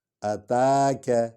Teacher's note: تا کو ہم لمبا کریں کیونکہ اس پر کھڑا زبر ہے۔ اتاک، کا کو ہم چھوٹا کریں گے۔